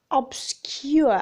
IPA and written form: 'ɒbskjʊə (obscure)